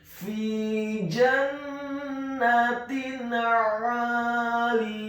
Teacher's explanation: Apabila ada huruf nun yang sukun atau tanwin, dalam hal ini adalah huruf ta marbutah yang harokatnya adalah kasrah tanwin bertemu dengan huruf-huruf izhar hakiki, yakni huruf alif, ain, ghain, ha, kha dan ha. Dalam hal ini adalah huruf ain, maka hukum bacaannya adalah dibaca dengan jelas izhar halqi atau izhar hakiki.